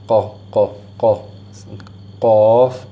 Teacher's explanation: And then you have a qaf, which is a heavy kind of sound, and this is at the back of your tongue